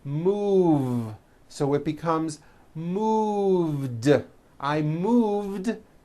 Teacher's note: move has that voiced v sound